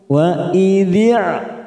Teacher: Jangan samakan dengan Hamzah Ain ini memiliki sifat rikhwah mengalir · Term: Ain sukun